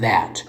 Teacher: a consonant produced with the tongue tip between the upper and the lower teeth. The first sound of that. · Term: Interdental